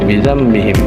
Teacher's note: Mim sukun dilafazkan samar menjadi gunnah dan ditahan 3 harokat. Cara membacanya samar, artinya pada saat membaca mim sukun disamarkan dan terdengar seperti dengungan gunnah. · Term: Ikhfa syafawi